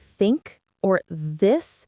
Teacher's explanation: It's not duh or tu. It's like you're putting your tongue between your teeth. For example, in words like think or this, you got to get that sound right. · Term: th sound